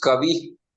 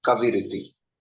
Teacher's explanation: Kavi plus halanta ra plus iti is equal to kaviriti. So the visarga got converted into ra.